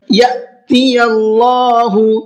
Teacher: فاعفو، یہاں فا کو کھینچ کر کے پڑھنا ہے، واصفحوا، صاد کو مہر کے پڑھنا ہے اور ہا کو کھینچ کر کے پڑھنا ہے۔ یأتی اللہ، حمزہ ساکنہ ہے، حمزہ ساکنہ کے پڑھنے میں جھٹکا ہوتا ہے، اس لیے میں نے اس کو جھٹکے کے ساتھ میں پڑھا ہے۔